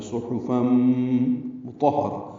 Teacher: میم کو جلدی پڑھنا ہے لیکن اس سے پہلے غنہ کرنا ہے، فم میں آواز ناک میں لے جانی ہے · 2 حرکات لمبا کریں گے، صحفاً میں صاد پر پڑھیں گے، ہا وسط حلق سے ادا کریں گے، نرمی سے پڑھا جائے گا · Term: ادغام ناقص مع الغنہ